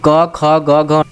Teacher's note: ये हमारे कंठ को स्पर्श करता है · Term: क वर्ग